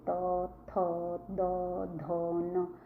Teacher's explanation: आप देखो दांतों से बोल के देखो आपकी ये दांतों से लगेगी। जब आप उनको बोलोगे त थ द ध न दांत को टच कर रही है।